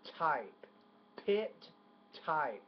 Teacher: So, a little bit more air on the pit.